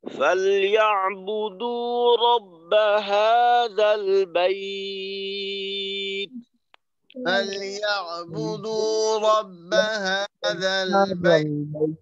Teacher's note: শেষে কিন্তু তায়ের একটু বাতাস ছাড়তে হবে, যখন তায়ের যজমের উচ্চারণটা করব বাইত, টান শেষে তার মাখরাজে গিয়ে আওয়াজটা আটকাবে, যখন ওই মাখরাজ থেকে আলাদা হব তখন একটু বাতাস বের করব।